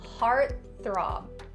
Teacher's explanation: after stopping the T sound, you're gonna go directly into the TH. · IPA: /ˈhɑːrt θrɑːb/